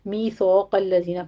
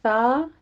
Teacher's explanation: سا نرمی سے پڑھیے، الف مد ادا کرنا ہے، قوف کو آگے پر کرنا ہے۔